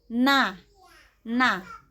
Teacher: ujung lidah bagian kepala lisan bertemu dengan langit-langit dekat gigi seri atas. Keluar dari sini adalah huruf nun